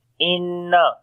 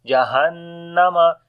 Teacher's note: On the noon there is shadda sign, we may gunna.